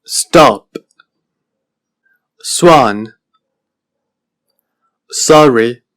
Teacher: es una vocal que se pronuncia con los labios redondeados y es una vocal más breve que la vocal anterior que